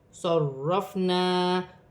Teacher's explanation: میں سے ہے، قلقلے کے ساتھ ادا کیا جائے گا، صرفنا، را مشدد ہے، جماؤ کے ساتھ ادا کیا جائے گا